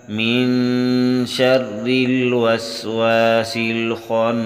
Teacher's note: نون مشدد پر غنہ ہے